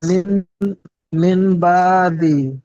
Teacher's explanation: নুন সাকিনের পরের হরফ বা এসেছে, তাই নুন সাকিনকে এ, নুন মিম দ্বারা, সাকিনকে মিম দ্বারা পরিবর্তন করে এক আলিফ পরিমাণ গুণনা করে পড়তে হবে